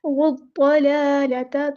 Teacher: حمزۃ الوصل ہمارا ڈراپ ہو جائے گا اور لام جو ہے ہمارا لام شمسیہ ہے تو ظاہر نہیں کریں گے۔ والضلالۃ، ضاد پورا ادا کرنا ہے، موٹا ادا کرنا ہے، لام پہ کھڑا زبر ایک الف کے برابر لمبا کرنا ہے